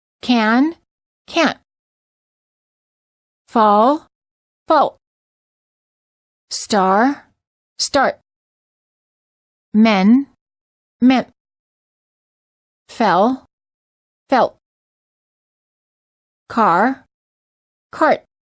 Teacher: the final held T interrupts and shortens the previous consonant.